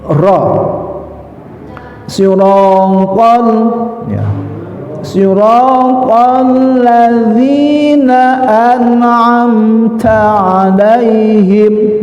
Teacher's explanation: Ra ada getaran fathah berhadapan sama alif. Nah, fathah berhadapan sama alif pasangannya disebut tabi'i ya.